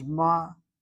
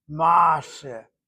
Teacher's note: When an original Shvanach opens up, does not hold, it opens up to an ah sound, or an sound, or an oh sound, one of the Chatafim. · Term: secondary opening